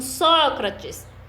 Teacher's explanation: O Sócrates é a sílaba só, e é a de maior intensidade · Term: sílaba tônica